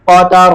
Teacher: اسی طرح ایک لفظ ہے قطرۃن، وقف میں قطرہ، را کو موٹا پڑھیں گے زبر ہونے کی وجہ سے، اور گول تا کو وقف میں ہا سے بدل دیں گے